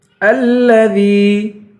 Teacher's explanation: الذی، حمزے کو لام سے ملائیں گے اور دال کو یا سے ملائیں گے. الذی، دال کو یا سے ملا کر یا کو ایک الف کی مقدار کھینچیں گے